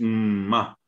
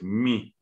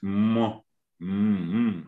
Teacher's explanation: Allí está la boca cerrada. Y hay un timbre nasal. Igual que con la N, igual que con la B.